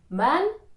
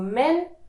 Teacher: one man contains a white a sound and two men contain a narrow e